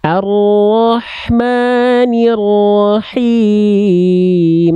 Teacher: H kecilnya dari tengah tenggorokan berbisik, karakteristik nafasnya. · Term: ha kecil